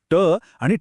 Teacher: ट आणि ठ म्हणताना जीभ उलटी होऊन टाळूच्या मागच्या भागाला लागते म्हणून ते मूर्धन्य